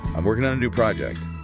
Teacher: the R in working. and how the stress is on the first part of that word